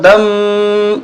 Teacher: یہاں غنہ ہوگا، میم مشدد ہے